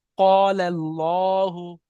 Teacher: আল্লাহ শব্দের ডান দিকে জাবার এসছে তাই আল্লাহ শব্দকে পুর করে পড়তে হবে, অর্থাৎ ল করে পড়তে হবে